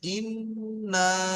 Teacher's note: ইনটা হলো গুন্না, ওটা নাকে তুলে একালি গুন্না হচ্ছে ইন · ওটা নাকে তুলে এক আলিফ গুন্না হচ্ছে ইন বুঝতে পেরেছেন এক আলিফ গুন্না আর তারপরে নাটা টান হবে দুই থেকে তিন আলিফ পরিমাণ · আর তারপরে আর নাটা হচ্ছে টান। নাটা টান হবে 2 থেকে 3 আলিফ পরিমাণ